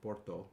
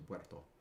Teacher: the short stressed vowels are the ones that broke from Porto to Puerto